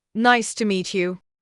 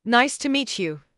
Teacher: Rising tone. Nice to meet you sounds curious, friendly. Falling tone. Nice to meet you sounds confident, certain.